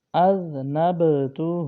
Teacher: اگلا حرف ذنب، یہاں ذال کو میم سے ملائیں گے، ذنب ذنب، اذنبتہ، ذال اس میں سیٹی کی آواز نہیں ہوگی، اذنبتہ نہیں پڑھنا بلکہ ذال زبان کا سرا اوپر کے دانتوں کے اندرونی کنارے سے پڑھا جائے گا